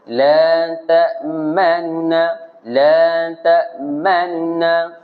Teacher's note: Sebut, kalau bahasa saya selalu guna, sebut laju. Nun yang pertama tu laju. Laju terus masuk na yang kedua tu. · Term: raum